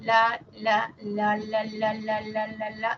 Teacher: nuestra lengua se acerca a la zona de los alveoles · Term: sonido alveolar